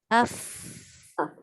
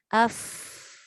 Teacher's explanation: Menyebut dan mengeluarkan angin tanpa sekatan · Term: hamas